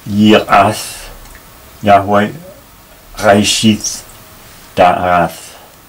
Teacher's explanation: we have three words ending in the T, which I pronounce th